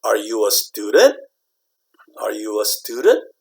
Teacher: You raise the tone at the end. Okay, the intonation goes up at the end